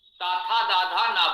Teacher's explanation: इसका उच्चारण स्थान दंत है, जिह्वा दांतों को स्पर्श करेगी ही करेगी। जिह्वा दांतों को स्पर्श न करे तो आप ताथा दाधा ना नहीं बोल सकते। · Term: तवर्ग